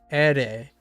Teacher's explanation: Ere, if you say a lot quicker, it will start rolling.